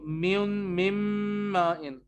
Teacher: आप मीम को मीम से मिला देंगे तो नून कहाँ जाएगा? नून आपकी नाक में जाएगा.